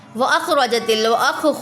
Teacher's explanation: خوا کو پر پڑھیں گے، خوا پر مستعلیہ میں سے ہے